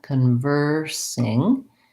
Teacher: So we have second syllable stress in conversing.